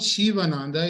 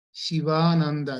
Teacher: it is Shiva and Ananda so the ah should be long it is not shivananda it is Shiva Ananda if you want